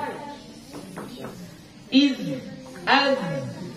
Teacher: Jadi harus ada sofir, harus ada suara yang mendesir, suara yang tajam.